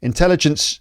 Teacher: the stresses on the second syllable